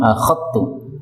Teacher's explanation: zal ketemu ta boleh idgham